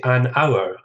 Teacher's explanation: Hour begins with H. It's a consonant, but we don't pronounce it